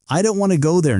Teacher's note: the smaller words like I, to and there are said more softly or quickly.